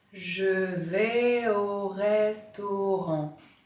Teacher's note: Vous avez remarqué l'enchaînement vocalique entre V et O.